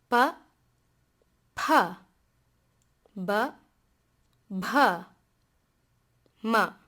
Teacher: the labials, which are sounds made primarily by using our lips